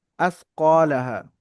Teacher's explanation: আরদু, আসকা, আসকালাহা, আলিফের ডান দিকে কফের উপরে জাবার আছে, আলিফ মাদ্দা, এক আলিফ পরিমাণ টান হবে।